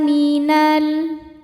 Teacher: Sebab ada alif lam menghadapi huruf qamariah yaitu huruf mim. Cara bacanya lam dibaca dengan izhar atau jelas. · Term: alif lam qamariah